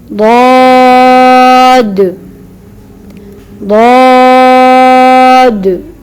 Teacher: ضاد کو صحیح اور مفخمہ ادا کرنے کا طریقہ یہ ہے کہ زبان کے آخری حصے کو اوپر کی طرف اٹھائیں اور زبان کی ایک کروٹ یا دونوں کروٹیں اوپر داڑھوں کی جڑ سے لگائیں تو ضاد مفخمہ ادا ہوگا. ضاد ضاد.